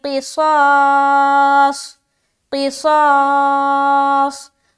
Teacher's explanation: صاد میں سیٹی کی آواز ظاہر ہوگی کیونکہ یہ اس کے اندر صفیریہ والی صفت پائی جاتی ہے